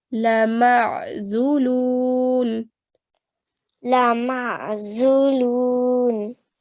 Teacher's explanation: So rather than saying lama and stretching the sound out, you're just going to join the ayn and the meme together and give the sound of ayn from the middle of the throat. So you're going to say لَمَعْزُولُونَ.